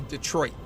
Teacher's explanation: People don't pronounce the second T in Detroit.